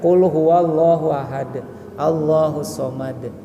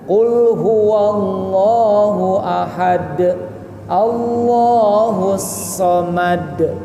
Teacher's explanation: Dan huruf terakhir yaitu huruf dal dan disukunkan karena waqaf, karena berhenti, maka dalnya jadi qalqalah. Qalqalahnya qalqalah kubro, qalqalah besar